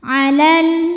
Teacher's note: dibaca panjangnya hanya saat berhenti kalau wasal lamnya pendek madnya gugur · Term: takhalus Bil hadfi